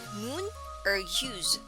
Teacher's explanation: sound is a closed backgrounded vowel as in moon or use the back part of the tongue raises toward the soft palate while the front part of the tongue is down just behind the bottom front teeth · of the tongue is down just behind the bottom front teeth lips take up a very rounded position projected away from the mouth the jaw is closed and the teeth do not touch the long u sound is considered as a tense vowel words